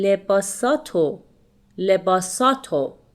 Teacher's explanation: we omit the re sound and we pronounce lebasato. So it will be lebasato, lebasato, خوب. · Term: spoken Persian